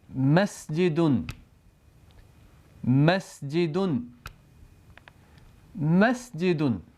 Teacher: دونوں ہونٹوں کے خشک یعنی باہر والے حصوں کو ملا کر میم ادا کیا جاتا ہے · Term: میم کی آواز